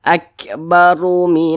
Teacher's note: huruf r-nya dibaca tebal dibaca tkhim jadi pangkal lisan kita itu naik terangkat ke atas ketika Kita mengucapkannya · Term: dibaca tafkhim